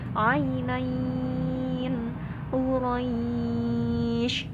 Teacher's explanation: Jadi nggak pendek dibacanya, bukan ainain, enggak, tapi 5 harokat. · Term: mad layin